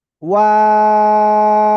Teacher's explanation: দুই ঠোঁট শুরুতে গোল হবে, মাঝখানে দুই দিকে প্রসারিত হবে, আবার শেষে এসে গোল হবে।